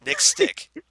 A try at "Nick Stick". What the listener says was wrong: You kind of shoved it together and it didn't. I wrote Nick Stick. Two different words. Not Nick Stick.